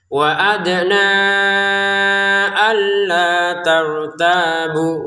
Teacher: 'wa' dibaca untuk lima harakat karena sesuai dengan hamzah. Kemudian, tekan huruf 'alla' dan panjangkan selama dua harakat.